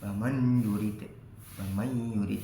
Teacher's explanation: Tidak boleh dibaca lebur, nun sukun harus tetap dibaca idhar atau jelas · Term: idhar wajib